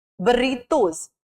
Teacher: र sound जो है वो वाइब्रेशन प्रोड्यूस कर रहा है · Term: trill